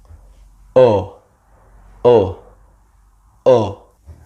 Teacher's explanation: Tongue low, lips rounded and open.